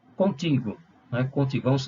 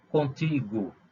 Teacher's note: A sílaba tônica é o ti. Portanto, o gó é a última sílaba e o ti é a penúltima sílaba. E ela é tônica, portanto, é uma palavra paroxítona.